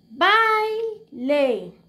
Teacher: aquí levanté la voz entonces by es la sílaba tónica